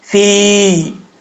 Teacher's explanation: فا کے بعد یا مدہ ہے، ایک الف کی مقدار اس کو لمبا کر کے پڑھیں گے